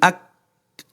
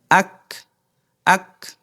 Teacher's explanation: যখন আপনি জজম বা সাকিন দিয়ে পড়বেন তখন আপনার বাতাস হালকা বের হবে অর্থাৎ চাপ দেওয়ার পরে যে বাতাসটুকু অবশিষ্ট থাকে তার থেকে সামান্য